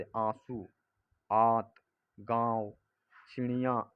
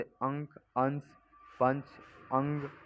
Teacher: अनुनासिक के उच्चारण में नाक से बहुत कम सांस निकलती है और मुंह से अधिक, जैसे आंसू, आत, गांव, चिड़िया इत्यादि। पर अनुस्वर के उच्चारण में नाक से अधिक सांस निकलती है और मुंह से कम, जैसे अंक, अंश, पंच, अंग इत्यादि।